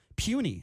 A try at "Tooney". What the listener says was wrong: Actually, it's Tooney with a T.